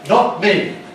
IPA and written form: ˈnɒt̚ ˈmiː (not me)